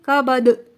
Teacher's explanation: آخر میں دال ہے جو کہ حروف قلقلہ میں سے ہے، تو اس پر قلقلہ کریں گے۔ ٹھیک ہے، مخرج آواز باؤنس ہوگی۔